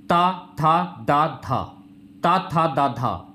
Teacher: यह वर्ण दंत वर्ण हो जाएंगे